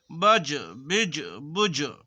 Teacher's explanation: جیم قلقلہ کے حروف ہے، اس لیے ان کے مخرج ٹکر کھا کر الگ ہو جاتے ہیں